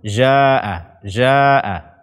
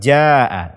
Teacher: membaca huruf jim dengan rikhwah